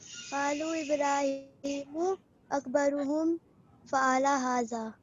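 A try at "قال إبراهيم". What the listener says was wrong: Good. Qala Ibrahimu. Qalu नहीं आएगा. फिर से.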